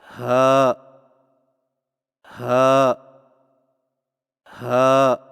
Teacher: ہا کی ادائیگی میں زبان کی جڑ کو حلق کی طرف دبائے بغیر باریک اور بغیر رگڑ کھاتی سانس میں پڑھیں